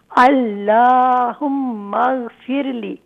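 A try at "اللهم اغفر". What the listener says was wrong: مغفر لی نہیں ہے، مغفر، یہاں دیکھیں را کے بعد لی نہیں ہے، وہ الگ ہے، جتنا میں پڑھا ہوں اتنا ہی پڑھیے، اللہم اغفر،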